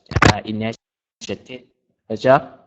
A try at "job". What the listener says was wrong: When we say the word job, you want to make sure to pronounce that B sound. Job.